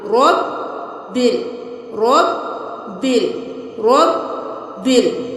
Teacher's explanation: अलिफ को बिल्कुल भी नहीं पढ़ेंगे क्योंकि जिस हर्फ के ऊपर कोई हरकत नहीं होगी उसको हम छोड़ देंगे